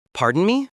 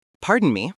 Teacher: It should be delivered with a slight upward tone indicating a question.